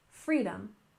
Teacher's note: freedom we stressed the first syllable